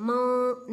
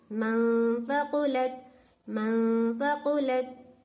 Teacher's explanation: नून की आवाज को नाक में तो ले जा रही हूँ, लेकिन हल्का लेको जा रही हूँ, मां नहीं, मनफ़क़ुलत, मनफ़क़ुलत।